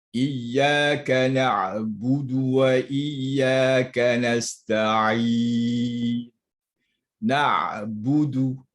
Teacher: Setiap huruf yang bunyi baris depan tidak sempurna. Bunyi baris depan ni tidak akan sempurna bunyi dia ataupun sebutannya melainkan dengan bibir dimuncungkan.